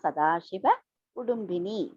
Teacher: The Dha is Alpa Prana.